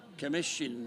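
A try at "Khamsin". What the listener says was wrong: Kamsin. Kamsin, I think the H is silent.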